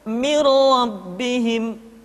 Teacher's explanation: nun mati tanwin dimasukkan pada huruf lam dan ro yang di hadapannya tanpa harus ditahan